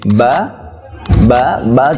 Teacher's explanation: বা বা বা যখন বলবো 2 ঠোঁট লেগে যাবে, বা ঠোঁট লাগবে আবার ছেড়ে যাবে